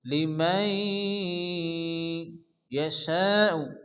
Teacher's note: নুনকে ইয়ার সঙ্গে মিলিয়ে এক আলিফ গুণ্য করে পড়তে হবে। লিমাই ইয়াশাউ, শা, এই মদের পরে একই সাথে কি আসছে হামজা মধ্যে মুত্তাসিল 4 আলিফ পরিমাণ টেনে পড়তে হবে। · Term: ইদগামে নাখিস